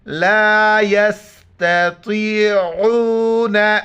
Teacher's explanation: عین کو گلے سے ادا کرنا ہے